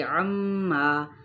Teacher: عما غنہ کرتے ہوئے الف مدہ